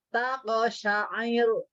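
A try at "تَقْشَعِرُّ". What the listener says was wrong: Nah, ro-nya harus tipis. Dan ada tasydidnya. Taqsyair. Tahan.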